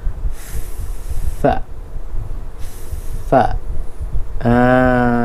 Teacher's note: Menekan bibir bawah ke gigi kacip atas.